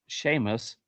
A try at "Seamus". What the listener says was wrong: Nope, it's Seamus. We We're good with that. S E A M Us. There's no H in that